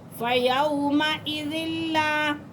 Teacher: واو پھر ساکن ہے، ساکن سے پہلے زبر ہے تو یہاں لین ہو رہا ہے، اور زال کو ہم لام کے ساتھ ملا کے پڑھیں گے کیونکہ لام مشدد ہے۔